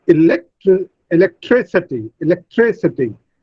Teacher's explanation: Now, tree receives the primary stress. Lek receives the secondary stress.